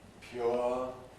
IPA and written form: pjʊə (pure)